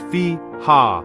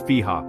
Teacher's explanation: You must also hold this for 2 beats. So, the correct way to read it is fi-ha, with both parts stretched equally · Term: mad